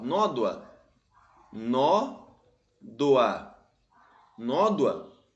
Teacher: regra de acentuação da palavra nódoa ó nódoa nó doa nódoa é uma paroxítona porque a penúltima sílaba é mais forte